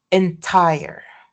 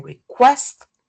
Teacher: So in request, the K is aspirated. In these cases, the voiceless stop occurs beginning a stressed middle syllable and is strongly aspirated.